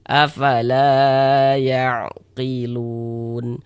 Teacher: Lun dibaca panjang. Ini namanya adalah mad arid li sukun. Namun pada awalnya dia namanya mad tabi'i.